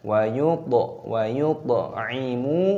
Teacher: mimnya dibaca panjang, ada wawu sukunnya, panjangkan 2 ketukan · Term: matobi'i